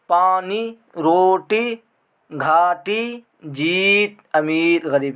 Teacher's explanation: یا معروف اس میں یا کا تلفظ کھینچ کر کیا جاتا ہے، یعنی اس کو پڑھا جاتا ہے کھینچ کر، اس کو یا معروف بولتے ہیں۔